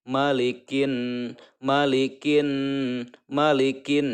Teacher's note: huruf kaf dimasukkan ke dalam huruf nun. Kin. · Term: alif lam syamsiah